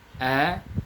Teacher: Kalau kita biasanya mengucapkan A, ya jelas, bunyi A-nya jelas. Adapun dialek orang Arab, dia tidak mengucapkan A itu sebagaimana kita mengucapkan. Dia seperti tercampur dengan bunyi E.